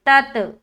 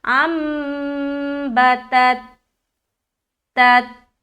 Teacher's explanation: ता ता से मिलते हुए हमारी आवाज एकदम स्टक हो जा रही है